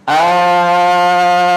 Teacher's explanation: hamzah wasolnya diubah jadi mad, diibdal. Allah, jadilah mad lazim kilmi.